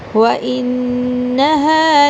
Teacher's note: ان نون پہ غنہ کیا جائے گا کیونکہ شد ہے، اور ہا کو تھوڑا سا لمبا کریں گے، آگے زبر کے بعد الف آ رہا ہے.